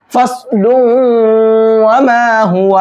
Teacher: اس تنوین کو واو میں مکس کر دیں گے اور تنوین میں واو کی آواز نکلے گی, نون کی آواز نہیں نکلے گی